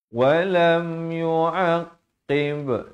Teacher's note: Lam ni izhar syafawi, jangan panjang.